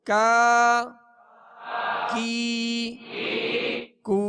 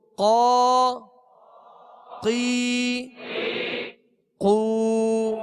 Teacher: کاف جو پہلا جو ڈنڈی والا کاف ہے اس کو باریک پڑھیں گے، اور دو نقطے والا قاف یہ پر پڑھیں گے، یہ اس میں فرق ہے، موٹا پڑھا جائے گا۔